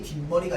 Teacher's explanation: 뒷말의 첫 소리 니은 미음 앞에서 니은 소리가 더 나는 건데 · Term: 니은 소리가 덧난다